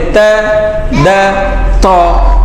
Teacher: زبان کا سیرا دانتوں کی جڑوں سے لگ رہا ہے، دانتوں کی جہاں سے دانت شروع ہوتے ہیں اس کو ہم جو ہے جڑ کہتے ہیں.